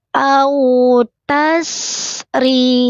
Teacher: Au, bukan ao. Au tasri, alirkan sinnya, tidak boleh memantul tase. Au tasri, rinya tipis, lidahnya datar, senyum.